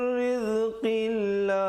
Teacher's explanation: Lafzul jalalah bila datang sebelumnya huruf baris kasrah jadi nipis